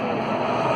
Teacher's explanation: utiliza una voz metida en el paladar blando que tenemos en la boca. Tenemos el paladar duro que está delante y el paladar blando que está detrás. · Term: voz en el paladar blando